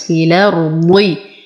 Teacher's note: نفخم الضاد بأقل درجات التفخيم